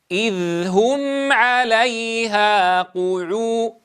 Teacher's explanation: العين حرف يخرج من الحلق، من وسط الحلق